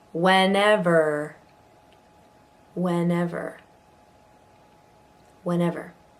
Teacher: So you'll notice in that one there are 3 different E's. The first 2 have an eh, and this third one is a schwa.